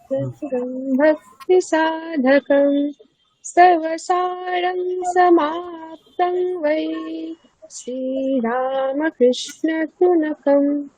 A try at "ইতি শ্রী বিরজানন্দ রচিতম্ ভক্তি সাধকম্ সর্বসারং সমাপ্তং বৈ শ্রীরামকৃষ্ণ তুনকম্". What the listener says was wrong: ঠিক আছে, ওখানে ওই হ্রস্ব দীর্ঘের ভুল আছে। শ্রী রামকৃষ্ণ তু নকম, তুটা দীর্ঘ হবে।